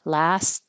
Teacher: I'm kind of putting my tongue in the T position, but not making a T. Last. Or you can just skip it.